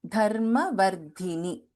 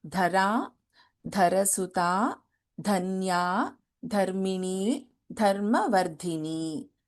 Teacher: both the धास here are महाप्राणक्षरास